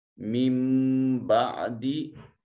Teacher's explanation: واو ساکن ما قبل مضموم واو مدہ ہے۔ من بعد نون ساکن کے بعد با حرف اقلاب آ گیا، نون کو چھوٹی میم سے بدل دیں گے، میم بعد پڑھیں گے۔